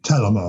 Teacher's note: it's more of an aspirated T, and the accent's on the first syllable